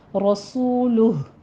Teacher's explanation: رسولہ میں را مفخم ہے، سو میں واو مدہ، آگے لہ ہا کی ساؤنڈ آپ نے لانی ہے اگر وقف کرنا ہے تو، ٹھیک ہے، رسولہ۔